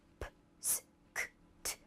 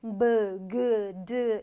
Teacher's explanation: 똑같이 입술이 붙이는데 얘는 P, S, K, T. 바람 소리, 무성음이고요. 얘는 B, G, D 이렇게 성대를 울리는 유성음의 차이일 뿐이에요.